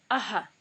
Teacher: It's called visarga, and it creates a kind of echo sound.